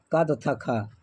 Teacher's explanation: क तथा ख यह दोनों घोष वर्ण नहीं है।